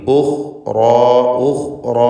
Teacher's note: ഖാഇന് തഫ്ഖീം, റാഇനും അതിൻ്റെ അലിഫിനും തഫ്ഖീം.